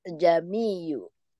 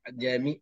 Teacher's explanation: Memang ain itu dia nak macam bunyi dalam, bulat ke dalam tengah-tengah halkum. Jami. Kita terasa macam ada sesuatu berkumpul dekat tengah-tengah halkum baru lepas.